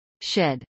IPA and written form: ʃˈɛd (shed)